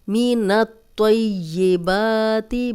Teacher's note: با پہ کھڑا زبر ہے، 2 حرکات لمبا بھی کریں گے